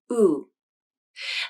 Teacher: Even though the vowel is a monophthong, which means there is only one vowel sound, native speakers pronounce this vowel with two lip positions. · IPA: /u/